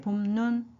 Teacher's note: 눈은 하늘 내린 눈이지만 두 번째 음절이니까 짧게